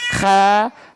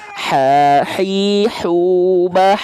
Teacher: Tapi karakteristiknya nafasnya seperti ya, bukan betul-betul dengkuran, tapi seperti dengkuran, seperti ngorok. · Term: kho